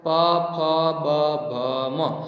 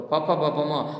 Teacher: એ હોઠ અડીને તો જ બોલી શકો, નકર તમે બોલી શકો નહીં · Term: હોઠના